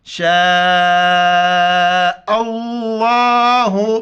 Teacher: اس کو مد کہتے ہیں، مد 4 الف کی مقدار کھینچا جاتا ہے